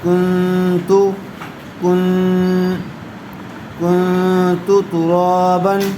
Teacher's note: غنّے کے ساتھ اخفا کر کے پڑھیں گے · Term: اخفاء